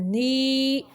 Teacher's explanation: وَنَتَوَكَّلُ عَلَيْكَ وَنُثْنِي، سا کو زبان کی نوک ثنایا علیہ کے سرے سے لگائیں تو تب سا نکلتا ہے، تو یہ مدہ ہے، تو 2 حرکات عربیہ جتنی اس کی لمبائی ہے۔ وَنُثْنِي، نی اس کی آواز کو ناک کی طرف نہیں لے کے جانا بلکہ منہ سے نکالنا